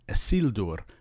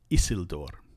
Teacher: Because of the L in the second to last syllable, sil, that's considered a heavy syllable, and so it takes the stress.